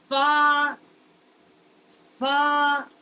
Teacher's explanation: فا کا جو مخرج ہے نیچے کے ہونٹ کا شکم، اندر کا حصہ اور ثنایا علیا کا جو کنارہ ہے ان سے جب زبان ٹکر کھاتی ہے تو اس سے فا فا فا کا مخرج جو ہے وہ ادا ہوتا ہے۔